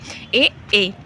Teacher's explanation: आगे चलेंगे, फिर है कि कंठ तालव कौन सा है, तो कंठ तालव जो है उसमें आपके ए आ जाएगा। कंठ तालव, इसमें आपका कंठ और तालु दोनों ही यूज होते हैं